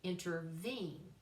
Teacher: you've got three syllables, stress on the third one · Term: anapestic